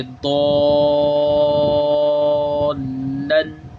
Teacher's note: مد لازم کی مد لگ رہی ہے، تو اس کو ہم 3 الف کے برابر یعنی 6 حرکات کے برابر لمبا کر کے پڑھیں گے۔ ایسے ضالن، آگے دال الف با زبر داب، با زبر با، داب، تا دو زیر تین، دابتن، یہاں پہ بھی سیم ہی مد ہے، یہ مد لازم کی ہی مد لگ رہی ہے، دونوں کی ایک مقدار ہے۔